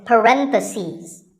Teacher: just one bracket you say parenthesis the stress is on rend if you're talking about both the plural is parentheses the last syllable becomes seas